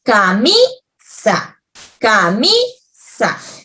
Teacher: la palabra camisa lleva la mayor fuerza de voz. ¿Dónde? En la sílaba mi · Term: sílaba tónica